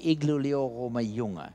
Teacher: that's a R that's way back in your throat, a uvular sound.